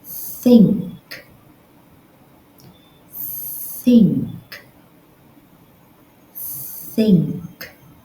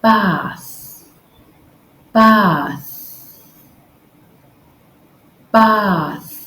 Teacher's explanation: tongue between your teeth gently touching against your Upper Front Teeth just blow air out no voice no vibration just air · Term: voiceless th